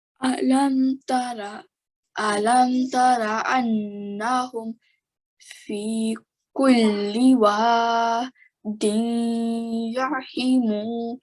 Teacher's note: you have the idgham here, so you have to make your nasal sound. That you can hear that nasal sound coming at the same time.